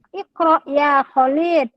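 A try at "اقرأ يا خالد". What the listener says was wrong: Yang panjang bukan lamnya. Ya Khalid. Bukan Khalid. Ulangi.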